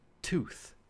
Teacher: So these are sounds made there, and you might feel it more if you make a sound like tooth, that t in tooth. Your tongue is touching your alveolar ridge when you make the word tooth